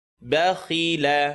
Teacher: ba light. Kha heavy. Lam light.